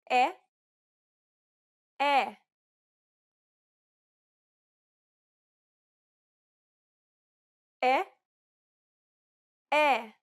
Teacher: this vowel sound is identical to the e in set it's known as the open e sound in Portuguese